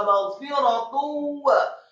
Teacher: Yang harokatnya marfu atau dhammah tanwin bertemu dengan huruf wawu. Hukum bacaannya adalah idgham bil gunnah, memasukkan dengan dengung atau dengan gunnah.